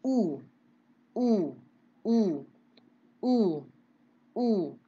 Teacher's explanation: itu kerasanya agak di belakang dari organ suara kita kan, U-nya tuh agak ke belakang lidah